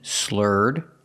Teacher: link The Sounds the r sound to the D